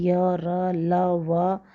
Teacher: ना तो मुख में कहीं स्पर्श करते हुए और ना ही रगड़ खाकर निकलती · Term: अंतस्थ व्यंजन